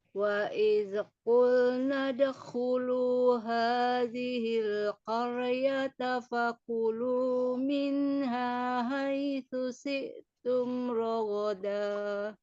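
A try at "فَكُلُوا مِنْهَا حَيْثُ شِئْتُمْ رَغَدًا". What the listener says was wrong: Nah, diulang dari fakulu, kemudian sempurnakan huruf ha dan huruf shin. Fakulu minha haitsu syi. Ya, syi.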